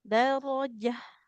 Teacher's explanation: Jangan panjang jimnya. Dia harakat fathah tanpa ada alif di depannya maka tidak boleh dipanjangkan